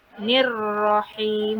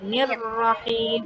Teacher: Nirrahim ditahan 2 harakat. R-nya double.